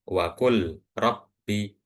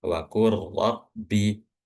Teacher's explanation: Jadi bukan wa rabbi tapi langsung waqu rabbi. Jadi huruf pertama dimasukkan ke huruf yang kedua.